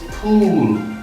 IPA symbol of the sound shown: u: